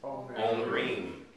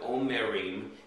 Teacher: Instead of omerim, it's omrim. The shiva underneath the mem creates a glottal stop and creates two syllables